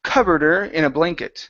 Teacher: Let's drop the H on her.